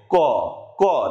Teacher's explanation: ক ক। দেখো, আমাদের জিহ্বার যে মূল মানে গোড়া আছে, গোড়ার অংশ যেটা আছে, একদম জিহ্বা মূল গোড়া, ওটা একটু মোটা হয়ে উপরে স্পর্শ করছে, ক ক ক। অর্থাৎ জিহ্বা মূলের সাহায্য নিয়ে উচ্চারণ করছি, এর জন্য এর আরো একটা নাম হচ্ছে জিহ্বা মূলীয়।